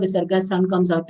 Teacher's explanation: Jiva bhu long sound, full letter followed by visarga. Visarga sound comes out as half sa as it is followed by sa of sanatanaha. So both half sa and full sa should be distinctly heard.